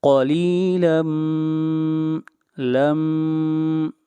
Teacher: تنوین کے بعد میم ہے اور میم حروف یرملون میں سے ہے، یہاں پر ادغام مع الغنہ کریں گے